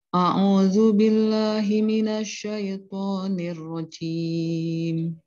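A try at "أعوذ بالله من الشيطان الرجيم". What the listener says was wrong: Jimnya jangan di depan, jimnya di belakang. Itu C jadi. Nirrajim.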